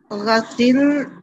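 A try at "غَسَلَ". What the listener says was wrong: Sister, सीन पे जबर है, अल्लाह यहाँ ये क्या है अभी क्या बताया? और अब तो देखें, अब तो मैं ना भी बताऊं तो अब तो माशाल्लाह आप इतने आपको पता चल गया कि पीछे जेर हो तो आगे क्या होता है।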